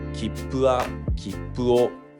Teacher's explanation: There's no accent kernel in the word. This word is classified under the first type of pitch accent.